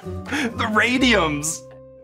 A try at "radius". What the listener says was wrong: Radius. Did you just say radiums?